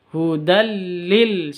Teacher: Hudal, tanwin bertemu dengan lam. Idgham bila gunnah. Bacanya masuk ke lam tanpa dengung. Hudal lil, seperti itu.